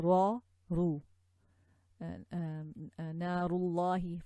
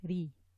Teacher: ra has a fatha and a dhamma. So ra, ru, narullahi, for example, like this. We have to say the ru heavy in a full mouth way